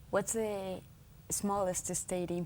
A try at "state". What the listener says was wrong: ¿Por qué dice smallest estate? Estate es una hacienda, como hacienda mexicana. Es como una finca, estate. What's the smallest state?